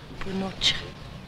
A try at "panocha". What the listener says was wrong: Not pinocha. Panocha.